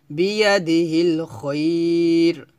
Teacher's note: এভাবে খয়র এক লিপ টান দিব, এটাকে বলা হয় মধ্যে লিন